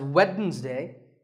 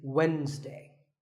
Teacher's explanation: the D is silent sometimes it's pronounced as weddings day but the proper way to